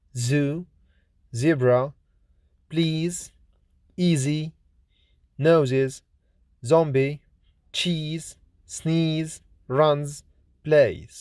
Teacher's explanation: Z is voiced, lenis, alveolar, fricative consonant